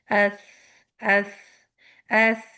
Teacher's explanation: जैसे आपने tip of the tongue ऊपर के दांतों के सिरों को लगाया वहां पे सिर्फ हवा गुजर रही है